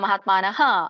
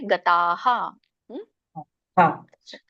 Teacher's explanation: ಸ್ವರ ಹೇಗಿರುತ್ತೋ ಹಾಗೇನೆ ಹ ಉಚ್ಚಾರಣೆ ಆಗುತ್ತೆ ಸ್ವರ ಅ ಇದ್ರೆ ಹ ಉಚ್ಚಾರಣೆ ಆಗುತ್ತೆ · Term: ವಿಸರ್ಗದ ಉಚ್ಚಾರಣೆ